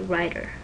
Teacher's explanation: the tip of your tongue touches the alveolar ridge behind your upper teeth, and then you release it right away